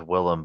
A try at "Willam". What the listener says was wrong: It's Willem, but not EM. It's AM. Willem.